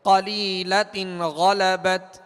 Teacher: غین حروف مستعلیہ میں سے ہے، بغیر ہونٹ گول کیے اسے پر پڑھیں گے